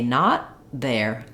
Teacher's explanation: I say not there. I make the T by stopping the air, and then I release it into the next consonant sound. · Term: unreleased or stopped T